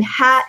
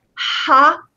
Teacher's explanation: in ha, it's very light, but ha, a lot of air comes out